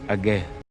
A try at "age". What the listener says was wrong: And again with the age. Why is it stressed on the ge? Utterly baffling to me. I don't think he's attempting to make it a short e.